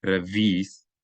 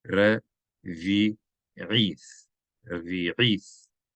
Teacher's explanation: It's not a silent letter. So it should not be revi'ith, like one elongated vowel, but they're 2 distinct vowels. These are 2 distinct syllables three syllables in all in this word.